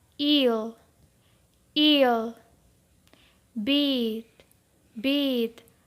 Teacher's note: the tongue in the mouth the first one is e e this is a long sound and its horizontal position is front and its vertical position is high